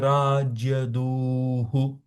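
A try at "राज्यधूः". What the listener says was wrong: so little more stress ಧ ಅಕ್ಷರ ಅದೆ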